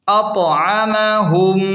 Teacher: یہاں اطعمہم کی میم ساکن کے بعد دوسری میم من آ رہی ہے، اس لیے یہاں ناک میں خوبصورت غنہ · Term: ادغام شفوی